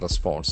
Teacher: The accent falls on the second syllable. There are two syllables.